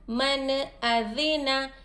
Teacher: یہاں پر بھی اظہار کا قاعدہ ہوگا. نون کے آواز کو ہم ظاہر کر کے پڑھیں گے, نہ غنہ کریں گے نہ اخفا کریں گے